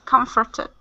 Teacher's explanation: Now this is one of the ones that does not follow that rule where you have a com or a con at the beginning. Okay, and we are putting the stress on the beginning, even though we're still going to pronounce that as comforted.